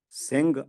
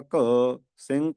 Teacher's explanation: ਆਪਾਂ ਲਿਖਦੇ ਹਾਂ ਘਗੇ ਨਾਲ ਬੋਲਦੇ ਹਾਂ ਗਗੇ ਨਾਲ